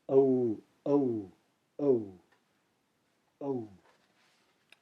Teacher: the O should be longer than the U